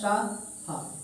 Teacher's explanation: जब रगड़ खा के अगर गर्म हवा बाहर निकलती है वो क्या कहलाते हैं, वो कहलाते हैं ऊष्म संघर्षी।